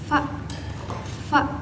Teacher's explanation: huruf fa itu keluar dari ujung gigi atas dan bibir bawah. Sifat sifat fa itu ee mahmus.